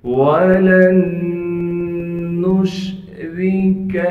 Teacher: را کو باریک کر کے پڑھیں گے اس لیے کہ را کے نیچے زیر ہے، کاف کو باریک کر کے پڑھنا ہے۔